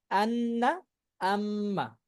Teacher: 17 নম্বর মাখরাজ নাকের বাসি থেকে গুন্নাহ উচ্চারিত হয়, যেমন আন্না আম্মা